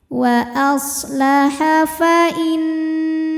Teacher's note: disebut atau dihukumi dengan ghunah atau ghunah musyaddadah atau wajibul ghunah karena nunnya ada tasdidnya maka dibunyikan dengan mendengung · Shad punya sifat yang tidak memiliki lawan yang dinamakan dengan sifat shofir artinya ada desisan seperti Suara angsa